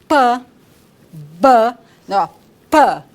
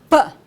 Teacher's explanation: Nós fechamos os lábios, há uma obstrução total e na soltura é que o ar sai. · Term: consoantes oclusivas